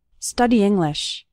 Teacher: The E from study and the I from English kind of combine.